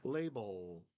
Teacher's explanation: there's no attack from the tongue it's just kind of resting there touching the top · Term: the second L